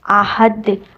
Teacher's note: احد، ہا کی ساؤنڈ وسط الحلق سے، ہا کی ساؤنڈ اپنے گلے کے درمیانے حصے سے نکالنی ہے